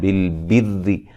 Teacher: را کو باریک پڑھا جائے گا، را کو موٹا نہیں کرنا. بر کچھ لوگ اس طرح پڑھتے ہیں اس کو غلط.